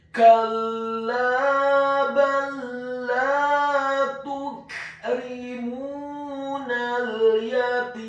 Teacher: Kata yatim, huruf ya-nya dibaca tipis, fathah 1 harokat. Huruf ta-nya dibaca tipis, kasrah 2 harokat karena setelahnya ada huruf ya sukun. Dan di akhir ayat huruf mim-nya dibaca sukun.